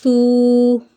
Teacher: سا کو نرمی سے پڑھیں گے، سیٹی کی آواز نہیں آئے گی